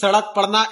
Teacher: द्विगु व्यंजन जिनको हम थ्रोइंग आउट भी बोलते हैं, उच्छिप्त मतलब फेंका हुआ व्यंजन भी बोलते हैं, क्योंकि इनके उच्चारण पर जीभ ऊपर उठकर तुरंत झटका खाकर नीचे जाती है